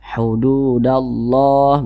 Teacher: lam berjumpa dengan huruf lam hukumnya adalah alif lam syamsiah maka huruf lamnya ini dia tidak dibaca makanya di sini kan tidak ada tanda bacanya jadi dia dibaca idgham langsung masuk ke huruf yang di depannya